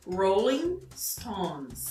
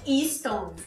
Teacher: E Stone também cuidar para não inserir nenhuma vogal, som de vogal antes de pronunciar o S